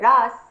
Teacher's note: كأن نبدل الهمزة حركة طويلة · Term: الإبدال الصوتي